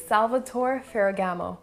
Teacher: ferragamo again in the italian language we're not speaking french so the last letters of the words are pronounced so the e is not silent and the r's should be rolled